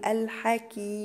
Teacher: وقف بمد عارض للسكون 4 حركات